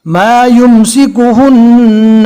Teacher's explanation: یہاں پر حمزہ کے نیچے زیر ہے، رکنے کی حالت میں جزم بنے گا، اور ما یہاں پر بڑی مد ہے، کم سے کم 3 اور زیادہ سے زیادہ 4 الف کے برابر کھینچنا ہے